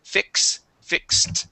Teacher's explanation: this is an X sound you're going to pronounce a k and an S